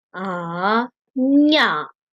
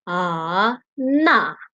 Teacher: So these 5 letters are changed to high tune. I mean nasal sound nga, nya, na, ma sound nasal sound are changed to high tune when you combine with the prefix